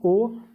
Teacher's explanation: कंठ से देखिए आवाज़ आ रही है, लेकिन ओ आपका ओष्ठ भी देखिए बन रहा है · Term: कंठोष्ठ